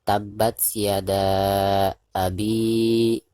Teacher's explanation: Ketika membaca abi, maka di sini dipanjangkan 2 harokat karena dihukumi mad tabi'i. Ada huruf yang berharkat kasroh yaitu ba ya, bi di sini.